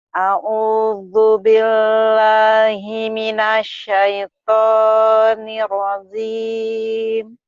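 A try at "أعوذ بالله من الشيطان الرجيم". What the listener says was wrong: Nirrajim. Bola sih nirrajim. Jimnya keras. A'udzu billahi minasyaitonir rajim. Jim. Ya, nirrajim hutang jim.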